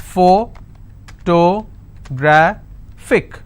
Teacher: since it's ending with IC, I will stress on gra. So whatever is the word ending, like you saw, look at the word ending and stress on the previous one.